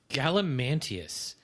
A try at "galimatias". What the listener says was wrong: No, you added an N. Galimatias. I don't know where you got that N from.